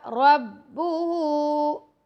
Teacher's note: را کو پور پڑھیں گے یعنی موٹا